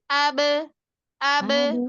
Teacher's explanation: dua alat ucapnya itu bibir atas dan bibir bawah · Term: qalqalah